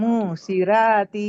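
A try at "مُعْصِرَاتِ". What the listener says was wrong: ये ये हमजा है, आइन है। आइन की आवाज ऐसी नहीं होती है। तो हुरूफ सही है, लेकिन आवाज तो नहीं निकल रही ना। अच्छा, हलक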